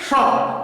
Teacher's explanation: ये अघोष महाप्राण के अंतर्गत आता है।